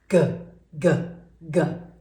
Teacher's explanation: we're going to feel the G sound down here in our throat as well. Because if it's too high, then it's not the right sound.